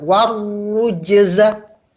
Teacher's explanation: Roknya pakai tasydid Pak, sehingga ditekan.